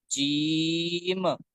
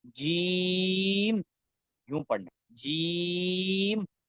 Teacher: جیم کو پڑھنا ہے تو اس میں خیال رکھنا ہے کہ آپ نے جیم کو پڑھتے ہوئے بھرپور طریقے سے اس بات کا خیال رکھنا ہے کہ آخر میں جو میم آ رہی ہے اس پہ جھٹکا نہ ہو